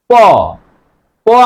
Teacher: প আমরা উচ্চারণ করলাম দুই ঠোট কিন্তু আটকায় গেছে। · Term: ব্যঞ্জন ধনি